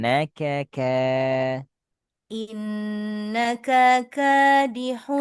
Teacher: kaf yang pertama pendek kaf yang kedua yang panjang